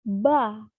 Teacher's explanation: Selanjutnya fonem B. Fonem ini merupakan bilabial plosif bersuara.